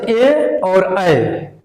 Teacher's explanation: कंठ तालव्य से हम लोग बोलेंगे, कंठ तालव्य से ए और ऐ